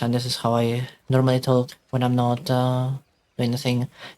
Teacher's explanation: The main difference that you have seen is that the pitch has dropped a lot.